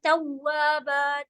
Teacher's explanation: توا جو ہے ہونٹ گول سے پڑھا جائے گا